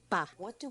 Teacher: O que usamos? Usamos os lábios de um jeito específico. Juntamos e depois explodimos num sopro de ar.